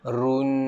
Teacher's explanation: Dia ada bunyi dengung kat belakang.